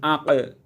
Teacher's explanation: পঞ্চম মাখরাজ হলো জিহ্বার গুড়া ও তার বরাবর উপরের তালু। এই স্থান থেকে একটি হরফ উচ্চারিত হয়, এটি হলো কাফ